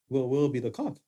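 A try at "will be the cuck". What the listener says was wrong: Clean up how you said that, because it said will be a cock or cock.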